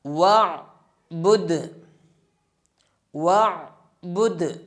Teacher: دال کے اوپر قلقلہ کریں گے اور وقف بھی اسی طریقے سے ہوگا